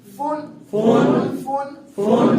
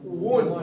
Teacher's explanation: اب فا اور واو میں فرق کرنا ہے. فا کے لیے دانت نیچے لگتے ہیں، واو میں دانت نیچے نہیں لگتے